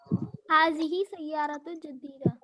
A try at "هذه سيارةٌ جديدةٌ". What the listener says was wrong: دونوں پہ بھی دو پیش آنا. ایک پہ دو پیش، ایک پہ ایک پیش آیا تو کیسا؟